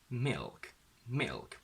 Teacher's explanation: And as you can hear, the fact that the tongue is basically interfering with the I sound means that the I sound is not as pure